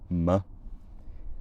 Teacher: M generally represents the bilabial nasal, made with the soft palate lowered and the lips closed